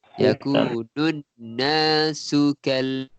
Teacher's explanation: Su tu terus masuk dengan kal. Su tak panjang.